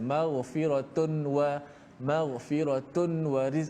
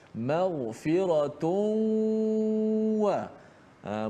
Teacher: Memasukkan suara nun mati pada tanwin maghfiratun itu dalam huruf wau. Jadilah dia seperti huruf bertasydid. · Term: idgham al-ghunnah